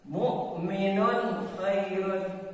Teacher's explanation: Contoh yang lainnya misalkan di saat ada domah tain bertemu dengan huruf kha ya. Di saat ada tanwin atau domah tain bertemu dengan kha ya, yang kelima ini, maka dibacanya jelas. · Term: diidharkan